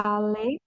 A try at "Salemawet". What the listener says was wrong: Al apa? Sa. Itu kan TS ya. Salema. Yang tongkat itu huruf apa? Huruf W ya. Huruf W. W. Pelan-pelan. Salemawet. Salemawet. Itu kan karena ada TS ya. Salemawet. Tadi dibaca sama.